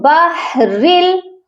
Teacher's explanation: ادغام کا مطلب ہوتا ہے ملانا، ہم یہاں پر لام کے ساتھ را کو ملا کر پڑھیں گے، اور وہ بھی بغیر غننے کے، یہاں غنہ نہیں ہوگا، کیونکہ جب بھی یرملون کے لام اور را آتے ہیں تنوین کے بعد آئیں چاہے نون ساکن کے بعد آئے تو غنہ نہیں ہوتا بلکہ صرف ملایا جاتا ہے۔